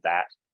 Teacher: That TH, though, if you're curious, voiced dental fricative is the technical term